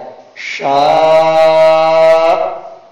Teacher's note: شین الف مد زبر شا، حمزہ زبر آ، شاء، آگے آیت شاء، لیکن حمزہ ساکن میں قلقلہ نہ ہو جائے، حمزہ ساکن کا جھٹکا تو لگے اور زوردار جھٹکا لگے لیکن قلقلہ سے بچے، قلقلہ کی بو نہ پیدا ہو جائے۔